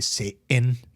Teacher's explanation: we don't pronounce the T in Satan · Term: medial T